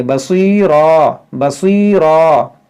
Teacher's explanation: यहाँ पर स्वाद हुरूफ मुस्तालिया है, इसको मोटा करेंगे। बाज़ लोग इसमें गलती करते हैं, सीन पढ़ते हैं बसीरा, ये रा को मोटा भी नहीं करते हैं।